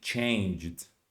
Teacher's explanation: this should be a d because the previous consonant is voiced so it's not ed it's just a d